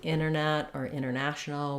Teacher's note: oftentimes the T gets dropped for example words like internet or International we just say inner instead of enter although you can say